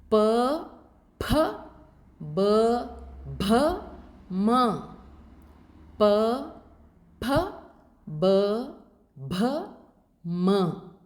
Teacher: the upper and lower lip are the place for these sounds these are sounds produced using the lips that is there is no action by the Tongue so the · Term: labials